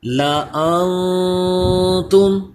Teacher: اس نون ساکن پہ بھی اخفا کا قاعدہ ہے کیونکہ اس کے بعد تا حروف اخفا ہے